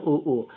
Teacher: उ ऊ को बोलोगे तो ये दोनों होठ से बोलोगे ना उ ऊ तो इस तरीके से ओष्ठ हो जाएगा।